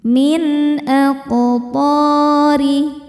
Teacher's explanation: karena nun sukun bertemu dengan huruf halqi atau tenggorokan yaitu hamzah. Cara bacanya nun dibaca jelas. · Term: izhar halqi